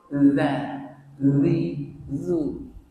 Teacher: Dia kena keluarkan sedikit lidah kita antara dua gigi seri kita. Gigi seri ni dua ni, gigi anak depan dan gigi bawah, atas bawah.